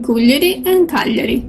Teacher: Both names have the accent on the first vowel.